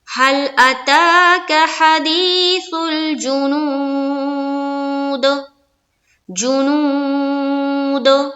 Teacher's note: دال کیا ہے، حروف قلقلہ میں سے ہے، تو یہاں پر ہمیں کیا کرنا ہے، اپنی آواز کو ٹکرانی ہے